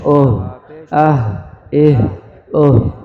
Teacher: دو چشمی والی ہے، گول والی ہے، اس کی آواز آئے گی سینے سے، بھاری آواز ہے.